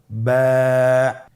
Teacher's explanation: আপনারা আমার সাথে বলুন বা আবার বলুন বা এর মাখরাজ হলো আপনের দুই ঠোটের ভিজা অংশ থেকে আপনি উচ্চারণ করবেন